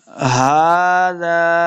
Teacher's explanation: जाल के आगे अलिफ है, इसको दो हरकत लंबा करके पढ़ना है।